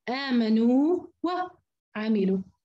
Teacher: فبحافظ على المد هذا كاملا قبل ان ابدا بالواو المتحركه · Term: مد التمكين